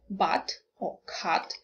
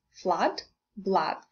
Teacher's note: Now, also from the diagram, we can understand that this is an open sound in English, a. Concerning the position of the lips, they are neutrally open, so it's not a rounded sound. Don't make it rounded. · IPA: /ʌ/